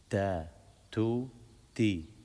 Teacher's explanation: not ta with your teeth, but ta with your tongue on the back of your teeth